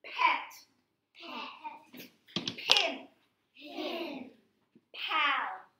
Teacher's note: It makes the air come out like a puff, doesn't it?